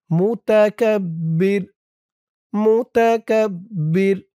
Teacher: অফ করার কারণে র উপরে পেশটা সাকিন হয়ে যাবে